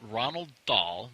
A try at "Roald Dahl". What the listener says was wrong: Roald Dahl. I think you said Ronald. It's not Ronald.